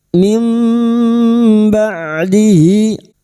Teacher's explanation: Membalik seperti bertemu mim dan mendengung selama 3 harokat, siap membunyikan huruf depannya yaitu huruf ba. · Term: bacaan iklab